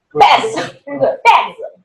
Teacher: if they are the voiced sounds, then I know this S should be pronounced as Z